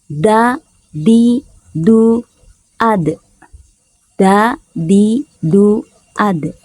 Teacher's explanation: huruf Dal yang keluar di antara punggung ujung lidah dan pangkal dua gigi muka atau gigi seri yang atas